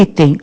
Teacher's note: Qual é a sílaba tônica de item? É o I.